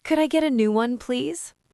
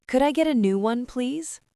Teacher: Notice how the word please goes up in pitch. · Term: rising melody